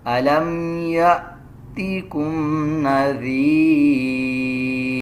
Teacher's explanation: اس میں اس بات کو سمجھیں، جب الف کے اوپر جزم آ جائے تو اس کا مطلب بھی ہوتا ہے کہ یہ جھٹکے والا حمزہ ہے، اس کو جھٹکے کے ساتھ ادا کیا جائے